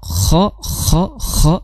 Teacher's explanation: kha itu makhrajnya di tenggorokan bagian atas, kha disertai sedikit suara ngorok